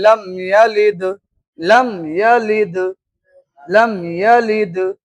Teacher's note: तो दाल में खूब जाहिर हो रहा है कलकला। कलकला का माना कि आवाज आपकी क्या हो, लौटती हुई है।